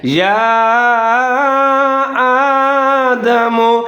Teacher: الف کے اوپر کھڑا زبر ہے، ایک الف کے برابر لمبا پڑھیں گے